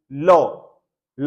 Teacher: पड़ती है नहीं ल बोलोगे तो होटों की ध्वनि नहीं पड़ेगी ल अंतस्थ व्यंजन है स्पर्शी है ही नहीं